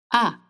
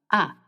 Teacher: the tongue is in the back of your mouth, not touching your teeth and the bottom.